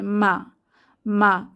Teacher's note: মিম হরফটিতে যদি আমরা ফাথা ধরে পড়ি, মিম ফাথা মা, মা বলার সময় আমাদের দুই ঠোঁটের শুকনা অংশ এক হয়ে যায় বা মিলে যায়, মা, এবং এতে কোনো বাতাস বের হবে না। এবং মা বলার সময় আমরা আওয়াজকে মোটা করব না, অর্থাৎ আওয়াজ বা ধ্বনিটা পাতলাভাবে উচ্চারিত হবে মা মা। এবং মা বলার সময় জিহ্বার গোড়া নিচের দিকে চেপে থাকবে।